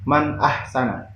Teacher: nun sukun bertemu dengan alif atau hamzah Jadi dibaca jelas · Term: izhar halqi